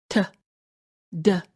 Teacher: we stop with the front of our tongue, as in the letters T and D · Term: stop sound